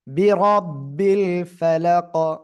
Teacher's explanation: অকফ করলে কব সাকিন তখন কলকলা হবে